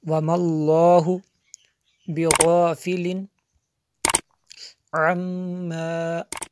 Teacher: میم شدد ہے اس لیے غنہ ہوا